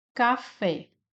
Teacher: Vírus, nós temos aqui uma paroxítona, uma vez que a sílaba mais forte é a penúltima. Café, a sílaba mais forte é a sílaba fé.